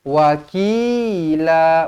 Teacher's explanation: Wa pendek, ki yang panjang.